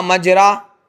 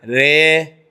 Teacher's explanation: زبر کی آواز تھوڑی سی زیر کی طرف مائل ہو. زبر کی آواز تھا مجرا، تو زبر کی آواز مجری، یہ ہو گیا زیر. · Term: امالہ